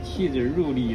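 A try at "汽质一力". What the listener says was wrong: 入 发 音 是 一 。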